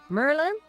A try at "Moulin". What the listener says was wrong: No, Merlin. Merlin. There's an O in there.